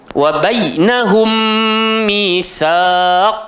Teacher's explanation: Sekali lagi kena rapatkan bibir tapi kali ini kena tekan. Pasal mim mati bertemu dengan mim. Jadi idgham mutamathil lain lah.